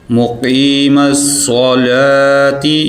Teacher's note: قاف کو موٹا کریں گے